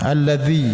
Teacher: Ya ayyuhalladina amamantaqulaha alladzi itu ya mati berbaris kasrah ini disebut mad asli atau mad thaabi'i. Panjangkan satu alif dua harakat.